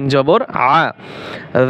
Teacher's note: আইন গলার ভিতরে চাপিয়ে বলতে হবে